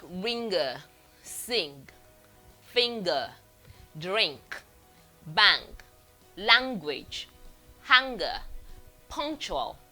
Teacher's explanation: this is a nasal sound formed with the back of the tongue on the soft palate. Letters that usually represent it, we have the NG, sometimes part of the NG, and we have NK.